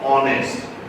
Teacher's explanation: you're not saying honest. You know how H is not being pronounced. You're saying honest.